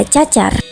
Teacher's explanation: huruf C pada umumnya dengan ciri mati, oral, laminopalatal, dan afrikatif